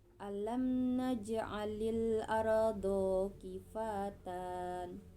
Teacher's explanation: terdapat hukum tajwid izhar syafawi karena mim mati atau mim berharakat sukun bertemu dengan huruf nun